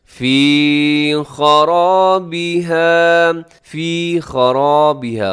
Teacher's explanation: خرابها میں خا موٹا ہے، را بھی موٹا ہے، آگے الف بھی موٹا ہے۔ الف اس لیے موٹا ہے کہ الف سے پہلے جب موٹا حرف آتا ہے الف بھی موٹا ہو جاتا ہے، الف سے پہلے کو باریک آ جائے تو الف بھی باریک ہونے میں 1 سیکنڈ لگاتا ہے۔